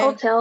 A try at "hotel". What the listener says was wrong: Hotel. The stress is in the second still.